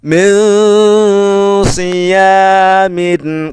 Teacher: Bertemu dengan huruf shad ya, huruf shad. Nah, shad ini ya tidak termasuk huruf yang tidak dengung, berarti dibaca dengung.